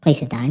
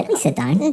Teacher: my intonation is going up · very flat intonation going down